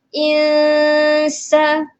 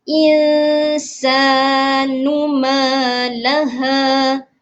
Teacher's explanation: Menyembunyikan sedikit bunyi huruf nun. Okey, huruf nun dan tanwin dan kita lebihkan bunyi huruf sin tu. Jadi maksudnya di sini kita kena dengunglah bacaan dia. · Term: ikhfa hakiki